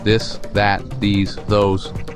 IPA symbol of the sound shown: ð